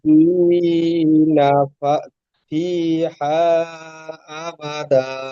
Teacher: দু জাবারের উপরে থামতে হলে এক জাবার গণ্য করে أبدا একালি পরিমাণ টান দিয়ে পড়তে হয়